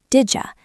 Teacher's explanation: D + Y equals J.